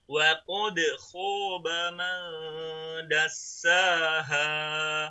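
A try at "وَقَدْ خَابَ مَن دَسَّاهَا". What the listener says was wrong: Tadi kan das. Ya, jadi agak ditajamkan ya. Shafir itu memang dengan ya.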